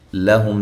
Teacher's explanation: لہم لام باریک، ہم میم ساکن کا اظہار ہے